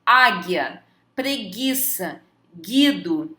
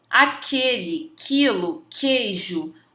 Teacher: As letras GU e QU são consideradas como dígrafos somente quando seguidas das vogais E ou I, como em gueixa ou quilo. Nesse caso, a letra U não representa nenhum fonema, ou seja, a gente não consegue escutar o som do U.